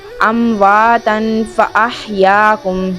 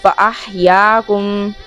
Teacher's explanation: یہاں پر ہا کو حلق سے ادا کریں گے، وسط حلق سے، حلق کے درمیان سے ، تو باریک آواز نکالیں گے اس کی بھی، فاحیاکم، ثم